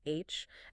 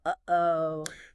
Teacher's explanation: glottal sounds made right at the glottis, the opening between the vocal folds like H, and that little stop in the middle of uh-oh.